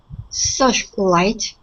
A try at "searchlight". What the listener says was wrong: Okay, so when we get to that CH sound, we want to use a hard CH. Searchlight. Searchlight. Okay, so with that CH sound, it's a burst of air. So we say ch, ch. Ch.